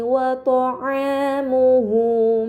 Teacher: Ini dinamakan mad badal, maka harus dibaca panjang selama dua harakat